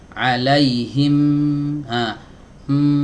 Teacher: huruf mim itu suaranya keluar bukan dari bibir